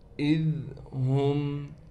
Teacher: حمزہ کو بالکل صاف طور سے نکالیں گے، ہم حمزہ کو ذال کے ساتھ ملائیں گے نرمی کے ساتھ. اذ ہم، ذال کو ہم نے بالکل نہیں ہلانا.